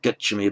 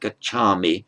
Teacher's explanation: that final a of the present stem always lengthens before an m or a v